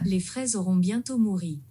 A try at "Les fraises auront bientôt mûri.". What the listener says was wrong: You don't say mouri, you say mûri. Les fraises auront bientôt mûri. No matter which French accent you have, you're not going to say mouri, you say mûri. Mûri.